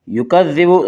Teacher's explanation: ذال کو نرمی کے ساتھ پڑھیں گے، ذال کا مخرج زبان کی نوک اور ثنا علیہ کا کنارہ